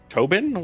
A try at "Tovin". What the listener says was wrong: Tovin with a V. Tovin